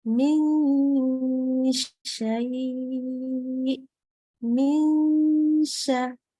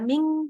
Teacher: jadi pas bilang min itu bukan pakai ujung lidah naik, tapi kayak mau baca sya. Jadi kayak mau baca mish, tapi pakainya n.